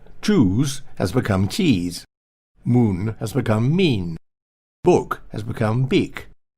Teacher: His house and grounds sounds more like Wiltshire to me, house and grounds. The cooing oo sound of old posh has disappeared altogether and been replaced by an e sound.